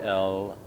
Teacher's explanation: the tip of the tongue is touching the roof of the mouth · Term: l sound